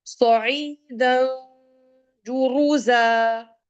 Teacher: اخفا letter, یعنی کہ وہ ہڈن نون کو آپ ناک میں تھوڑی دیر کے لیے چھپائیں گی